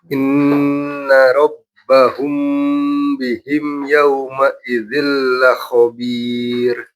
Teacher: Kalau yang mim ketemu ya, dia izhar syafawi. Jadi nggak perlu ditahan.